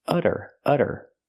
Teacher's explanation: We see the double T pronounced as a fast D because it's between vowels.